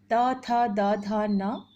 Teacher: त वर्ग का उच्चारण स्थान है दंत